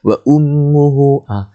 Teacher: Kat mim tu kan ada tanda mim syaddadah, maka wajibul ghunnah. Dengunglah 2 harakat lah.